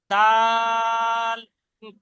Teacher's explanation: দাল, 3 আলিফ টান দিয়ে পড়তে হবে